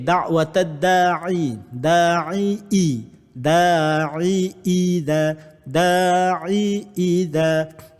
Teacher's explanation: huruf Ain ni duduk di peringkat pertengahan, manakala Hamzah ni duduk di peringkat bawah